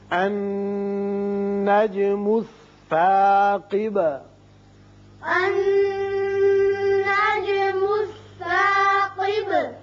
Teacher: نون مشدد ہے، غنہ کریں گے